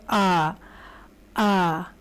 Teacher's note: یہ آپ کے گلے سے ادا ہو رہی ہے، اور جب یہ ساؤنڈ باہر نکل رہی ہے، صرف ساؤنڈ، تو دیکھیے گا آپ کی زبان بالکل نہیں ہل رہی، اور جو ہے آپ کا منہ کھلے گا اور یہ گلے سے اوپر تک کو جو ہے پوری آواز آئے گی۔ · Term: الف کی ساؤنڈ